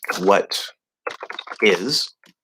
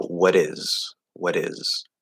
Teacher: So we also know that if you have a T normally without an S, all right, like if I say what is, that T in American English is going to turn into a flat D.